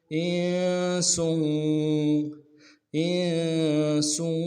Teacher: حمزہ کو نون کے ساتھ ملانا ہے، نون ساکن غنہ کریں گے، سین کی سیٹی باریک ہوگی ، سین کی تنوین کو آگے واو کے ساتھ ملانا ہے،